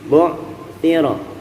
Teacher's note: Ya'lamu, idza 2 harokat, bu'thira sama, jangan sampai memantul, jangan sampai bu'thira. Bu'thira itu bukan qalqalah, huruf ain, jangan sampai mantul.